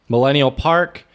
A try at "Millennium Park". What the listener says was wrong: Millennium You said Millennial Park. It's Millennium Park.